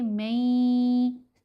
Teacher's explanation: मई यह जो मई की आवाज को लंबा किया। दो हरकात की मिकदार लंबा करना है क्योंकि यह गुना हो रहा है। · नून को या के अंदर मर्ज करेंगे। मई यह जो मई की आवाज को लंबा किया। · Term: इदगाम